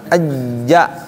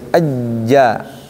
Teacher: tengah lidah dengan tengah langit-langit nempel tidak? Nggak nempel. Tapi kalau jim nempel tuh. Ajja nempel.